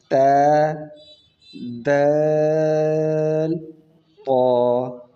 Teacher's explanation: زبان کی چوٹی اور دانتوں کی جڑ، ان میں سے یہ 3 حرف نکلتے ہیں